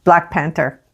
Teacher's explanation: they don't pronounce the th, it will always be a hard t sound